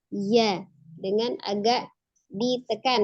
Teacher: maka huruf Iya termasuk huruf yang bersifat al-jahru jahar Ya jelas nafasnya tertahan jadi tidak ada hembusan nafas yang mengalir ketika mengucapkan huruf ya